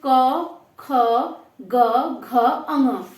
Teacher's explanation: ये कंठ हो गए, क्योंकि हम जब इसको बोल रहे हैं तो जो मुख से हमारी हवा आ रही है, अगर हम एक बार जीभ का ध्यान न करें, खाली गले को देखें, तो क, ख, ग, घ, अंग, देखो ये कंठ से बोले जा रहे हैं, बिल्कुल नीचे से। ठीक है, यहां से बोले जा रहे हैं, ये कंठ हो गए यहाँ पे।